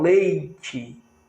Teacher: Quando eu falo leite, eu tenho I semivogal. Só existe semivogal do lado da vogal.